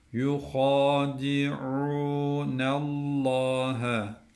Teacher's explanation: derken ayın harfi boğazımızı sıkacağız